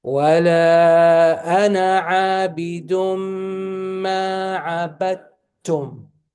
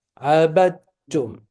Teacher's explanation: You skip the dal, you go to the ta.